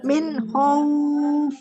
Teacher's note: Di sini ini izhar ya, nun sukun ketemu dengan kho-nya ini adalah izhar ya